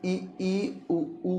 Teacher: इ ई संवृत उ ऊ संवृत जिनके उच्चारण में मुंह बहुत कम खुलता है। यानी खुलता बहुत कम या ना के बराबर है उन्हें हम इ ई उ ऊ कहते हैं।